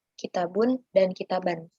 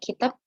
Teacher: Lalu, jika sebuah kata bertanwin, domah atau kasroh, maka tanwin di akhir kata itu dibuang dan huruf akhir disukun atau dihilangkan vokal akhirnya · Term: waqaf